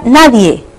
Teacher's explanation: En la palabra nadie, ¿cuál es la sílaba tónica? Die. Por tanto, la sílaba átona es na.